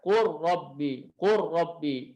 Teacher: Seperti lam ke huruf ro yang di mutaqariban tadi, ya, qul rabbi dibaca qur rabbi, qur rabbi. Lamnya hilang sama sekali. Qur rabbi.